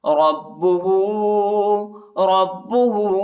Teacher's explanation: ہاں پر الٹا پیش اور چوٹا مدھی، اس کو تقریباً 2-3 سیکنڈ تک کھینچیں گے.